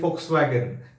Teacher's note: V in German language is pronounced as F